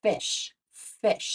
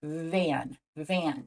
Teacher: this sound is voiced so you can feel your vocal cords vibrating when you say van